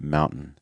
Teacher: a lot of times when we have these T's that come before an N, we get what's called a held T or a stop T